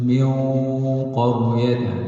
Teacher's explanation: min qa, mati bertemu dengan qaf, asyaddu quwwatan min qaryat, itu dengung tebal, bukan dengung nipis